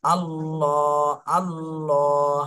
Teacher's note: আল্লাহ শব্দকে মোটা করে পড়তে হবে আবার এক আলিফ টান দিতে হবে